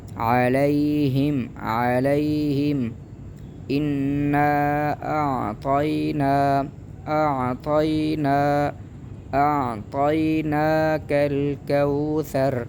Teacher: حمزہ کو بھی نرم پڑھیں گے اور عین کو بھی بالکل نرم انداز سے گلے کے درمیان سے نکالا جاتا ہے